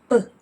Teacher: It's puffed out of your mouth. So just like the sound of P, P, your throat does not vibrate. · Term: voiceless sounds